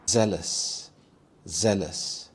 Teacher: This has two syllables and the stress is on the first syllable. Zel. Zealous.